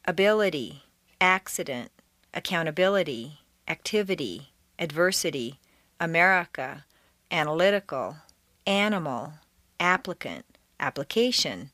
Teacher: the letter i in the unstressed position devolves consistently into a schwa